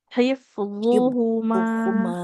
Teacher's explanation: mimnya kan enggak bertasdid ya enggak boleh humma